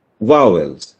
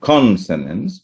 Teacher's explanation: It's not vowel, it is not vowels, it's not vowels, it's vowels. See, the stress is on the first syllable.